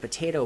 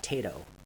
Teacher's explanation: weak syllable deletion. So it's not the stressed syllable, but the weak syllable. And we have, instead of potato, we have tato.